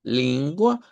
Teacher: las palabras que terminan en a marcar bien esa a centralizada